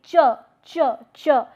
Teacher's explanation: it begins with a stop but it releases as a fricative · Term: affricate